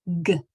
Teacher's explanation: Its hard sound is G. It has that guttural stop where the back of your tongue hits the roof of your mouth and it breaks it. It's a stop.